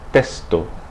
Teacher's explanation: some Spanish speakers pronounce the X more like an S when it comes before another consonant